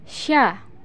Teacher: keluar dengan menyentuhkan Tengah lidah dengan langit-langit diucapkan mengalir udaranya dan mengalir pula nafasnya bahkan ketika melafalkannya menyebar nafas dan udaranya yang disebut dengan tafasyi